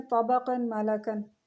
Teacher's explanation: قاعدہ ہوگا ادغام مال غنہ کا، نون تنوین کو میم میں مدغم کر کے غنہ کے ساتھ پڑھیں گے. نون تنوین کو مرج کریں گے میم کے ساتھ اور غنہ کے ساتھ پڑھیں گے